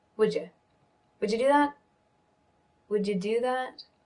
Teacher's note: Would you becomes would ya. Because I'm not emphasizing the you, I'm emphasizing the would.